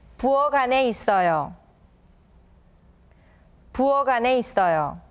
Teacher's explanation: The 받침 키읔 in the word 부엌 is turned into the 받침 기역 and is linked with the word 안 that follows to be read as 부엌안.